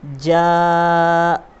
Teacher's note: حرف مد کے بعد حمزہ اگر اسی کلمے میں آ جائے تو مد متصل ہوتا ہے، اور مد متصل کی مقدار 3 الف سے 4 الف کھینچ کر پڑھنے کی ہے، جیسے جاء۔ اب یہاں پر آپ دیکھیے یہ جیم کے اوپر زبر ہے اور یہ الف ہے، اور یہاں پر یہ مد لکھا ہوا ہے، تو ہمیں اس کے ہجے اس طرح سے کرنے پڑیں گے۔